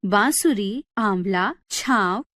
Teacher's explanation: इस ध्वनि का उच्चारण करते समय हवा नाक और मुख दोनों से बाहर निकलती है। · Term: अनुनासिक